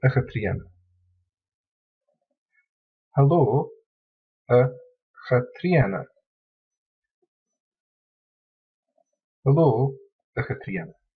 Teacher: So in the vocative case, the k sound in Katrina is lenited or softened and becomes ch